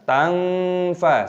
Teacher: Nun sukun bertemu dengan fa adalah ikhfa, jadi disamarkan tangfa seperti itu.